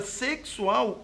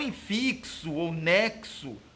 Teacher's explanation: na palavra sexual o x está me representando o dífono KS é como se houvesse um encontro consonantal aqui representado por uma